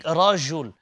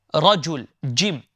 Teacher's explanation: use the middle of the tongue allow the middle of the tongue to lift up and to touch the palate at the top